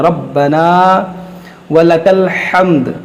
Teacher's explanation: یہاں پر دیکھیں الف مدہ ہے، اس را کو موٹا کریں گے، یہاں پر جماؤ کے ساتھ پڑھیں گے ربنا ولک الحمد.